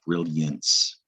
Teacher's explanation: Then brilliance, where the I kind of makes a Y sound